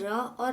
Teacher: उसके बाद है दंत मूल इसके अंतर्गत र और ल आते हैं